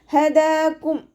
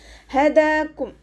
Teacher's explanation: ഹ അക്ഷരത്തിൻ്റെ സൗണ്ടിനെ തൊണ്ടയുടെ അവസാന ഭാഗത്തു നിന്ന് കൊണ്ടുവരാം. തൊണ്ടക്കുഴി നമ്മൾ പറയാറില്ല, ആ ഭാഗത്തു നിന്നാണ് കൊണ്ടുവരേണ്ടത്, അഖ്സൽ ഹൽക്കിൽ നിന്നും.